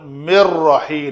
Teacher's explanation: نون ساکن کے بعد را آیا تو ہم نے ادغام کامل کیا، بلا غنہ کیا۔ بلا غنہ کا مطلب ہے یہاں پہ ٹائم نہیں دینا، تو مر رحی نون بل پڑھنے میں نہیں آئے گی۔